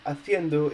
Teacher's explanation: Haciéndolo, the raw form is like haciendo, it's the progressive form. In the form haciendo, the vowel accentuated is like the E from the last but one syllable. But in haciéndolo, you're adding a syllable, so basically you need a written accent on the E in order to keep it on the E.